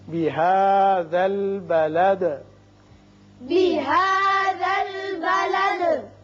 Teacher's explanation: یہاں وصل کی صورت میں آپ دال کے نیچے زیر پڑیں گی بلدی وانت، لیکن جب آپ وقف کرنا چاہیں چونکہ آیت ہے تو دال ساکن ہو جائے گی اور ساکن ہونے کے ساتھ ساتھ اس کی صفت قلقلہ بھی ادا ہوگی